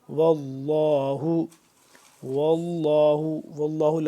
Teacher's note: لفظ اللہ پور پر کر کے پڑھیں گے